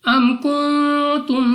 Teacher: اب سب سے پہلے ہمارے پاس یہاں پہ ہے میم ساکن، تو میم ساکن کے بعد کاف، تو یہاں پہ ہمارے پاس اظہار شفوی کا قاعدہ ہے، بغیر غنہ کے پڑھا جائے گا